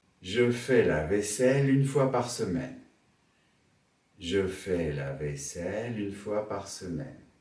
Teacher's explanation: Je fais la vaisselle monte, une fois par semaine descend.